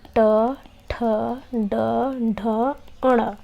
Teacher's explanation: इन वर्णों को बोलने पे हमारी जीभ के ऊपर जो छत होती है उस पे जोर पड़ रहा है, यानी कि उसको छूकर ये वर्ण निकल रहे हैं, तो ये मूर्धन्य स्पर्शी व्यंजन कहलाते हैं।